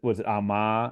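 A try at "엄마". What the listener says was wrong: Oh, it's Omma. Yeah, the stress is on the first syllable.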